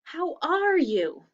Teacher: do you hear my voice going up at the end